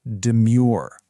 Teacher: putting the stress on the second syllable